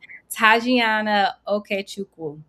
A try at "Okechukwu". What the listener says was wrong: Oh, very close. The W is silent, but that was good. It's Okechukwu. the W is silent, but you were very close. A lot of Nigerian names, the W is silent.